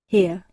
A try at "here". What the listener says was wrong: Here, aqui, cuidado com a pronúncia, o H tem som, ele tem um som como se fosse um R em português, então here, here.